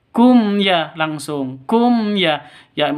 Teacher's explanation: mim mati bertemu dengan Ya jelas terang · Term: izhar syafawi